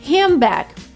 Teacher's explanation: D disappears, N is changed into M.